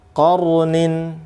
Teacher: ra sukun sebelumnya fathah itu tebal